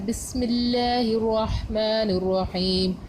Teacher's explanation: بسم اللہ ہم نے اس میں لام کو موٹا نہیں کیا